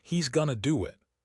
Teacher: Notice how he is going to do it becomes 5 clear syllables, but he's gonna do it sounds like 3 fast beats.